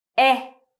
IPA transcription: e